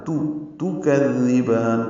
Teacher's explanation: کذبان کاف کو نرمی سے پڑھیں گے، زال سے ملائیں گے، زال کو نرمی سے پڑھیں گے، زبان کی نوک سامنے کے دانتوں کے اندرونی کناروں سے لگائیں گے